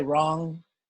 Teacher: the Anushwara is normally pronounced like the guttural nasal ng in North India